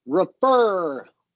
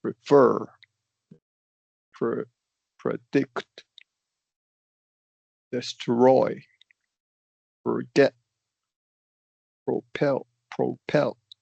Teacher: try a little bit harder with that second syllable to go up